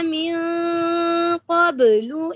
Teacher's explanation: قاف کے اوپر جو ہے وہ قلقلہ کی بلند آواز ہے، اور قاف حروف مجہورہ ہے، محموسہ نہیں